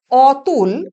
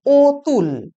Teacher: রাঢ়ী উপভাষায় অ ধ্বনি কখনো কখনো ও ধ্বনি রূপে উচ্চারিত হয়। যেমন অতুল, সেটা উচ্চারিত হয় ও তুল।